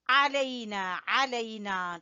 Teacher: عین کو گلے کے درمیان سے نکالیں گے